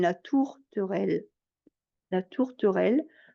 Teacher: le premier r on l'entend à peine la tourterelle la tourterelle on les entend pas beaucoup les r de tourterelle · le R là de tourterelle, le premier R, on l'entend à peine